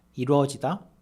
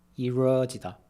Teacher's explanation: in the song, ㄹ gets pronounced like an English r, giving you that smooth i-reo sound.